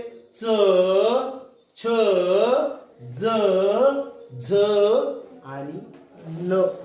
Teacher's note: जिभ कुठे लागते या व्यंजनाचा उच्चार करताना टाळूला लागते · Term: तालव्य